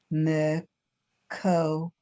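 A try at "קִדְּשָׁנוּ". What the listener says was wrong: Not ko. There's a line under there. 2 dots is an A. Dash. Dash.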